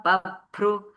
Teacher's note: You know this bhru should be Mahaprana.